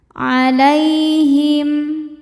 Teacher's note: Lai hukumnya harfulin sebab ada ya sukun sebelumnya fathah. Cara bacanya lembut atau lunak.